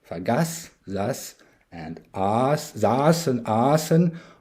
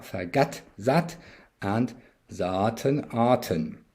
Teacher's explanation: Veldeke's native dialect, Limburgish, did not make this shift and conserves Germanic t.